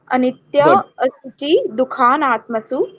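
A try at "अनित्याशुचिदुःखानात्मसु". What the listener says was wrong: अनित्य असुचि नहीं बोलना, अनित्य सुचि, अनित्य सुचि दुखानात्मसु अनित्य सुचि दुखानात्मसु अनित्य सुचि दुखानात्मसु दुखानात्मसु दुखानात्मसु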